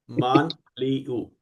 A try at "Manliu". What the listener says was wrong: Yeah, but don't pronounce with the American accent. So it's not man, it's Manliu. Liu.